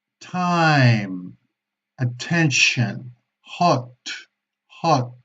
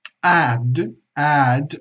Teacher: la única diferencia es que la T es voiceless y la D es voice, pero los puntos de articulación son el mismo. La punta de la lengua toca la parte de arriba de las encías, que en inglés se conoce como the gum ridge.